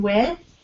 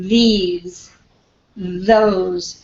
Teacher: So the first one is with no voicing, as in with. And the second one is as in these, those. It has voicing. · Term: TH sounds